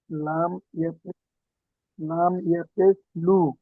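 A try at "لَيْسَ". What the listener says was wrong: লাম ইয়া জাবার, লামের উপর জাবার এসছে, লাম ইয়া জাবার, লাম ইয়া জাবার, জি। লাম ইয়া জাবার লাই, লাম ইয়া জাবার লাই, লাম ইয়া জাবার লাই, সিন জাবার সা, লাইসা, লাইসা, লামের উপর জাবার এসছে,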